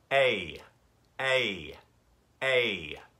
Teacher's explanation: of light pressure against the bottom teeth to e a e your tongue is flattened out there's a bit more pressure on your teeth and we're really pointing towards the front of the mouth so it goes a a a right and we use that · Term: diphthong